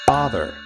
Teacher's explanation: The short A in father now sounds different. It makes an ah sound, like you finally understand something.